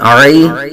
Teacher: یا لین کا قاعدہ ہے بغیر کھینچے بغیر جھٹکا دیے